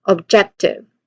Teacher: the main emphasis here should be on the second syllable, jet